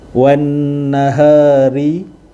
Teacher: ra berbaris di bawah, ra nipis. Wan nahari, idza huruf zal berbaris di atas, selepasnya ada huruf ma asli, dan tajalla, la belakang tu ma asli.